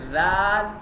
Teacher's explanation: مثال کے طور پہ اپنی زبان کو آپ دانتوں پہ رکھیں اور پھر پڑھیں ذال، تو ذال میں سیٹی کی آواز نہیں آئے گی بلکہ نرمی سے پڑھی جائے گی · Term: بغیر سیٹی کی آواز